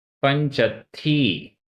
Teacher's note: पंच, चा में छोटा आ, अत्थी का आ, दो छोटे आ मिलकर बड़ा आ हुआ